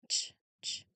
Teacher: So ch ch this is the IPA symbol for the ch sound like at the beginning of chair or cheese. It's actually a combination of a t sound and um sh sound blended together very quickly. Notice how the two letters c and h in the spelling are represented by one unique IPA symbol the ch symbol.